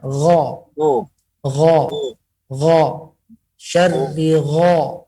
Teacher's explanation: bukan lidah belakang, tapi tenggorokan paling atas. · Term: Huruf gha